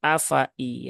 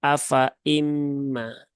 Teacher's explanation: jangan dibaca panjang di sini, tetapi fa-nya dipendekkan